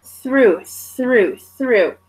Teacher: it's the clear TH sound, not the Z TH one